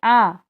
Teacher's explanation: तो आ जो है यह पश्च स्वर है